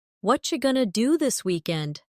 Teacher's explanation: Did you hear how what are you going to became what you going to? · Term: connected speech